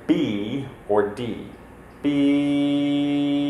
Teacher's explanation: sound the sound only changes when we cover the mouth because all the airflow is being directed out the mouth nothing is getting up into the nose because our velum is nice and high